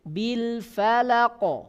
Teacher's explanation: Ketika qaf ini mati, maka dia mengeluarkan suara pantulan. Ya, ketika qaf ini sukun, maka akan memantul, akan keluar suara apa? Akan keluar suara pantulan